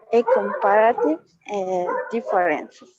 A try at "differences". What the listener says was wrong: Differences, good. And put more emphasis here, right, in the S.